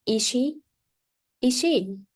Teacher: to show surprise, you can ask a short questions with rising intonations.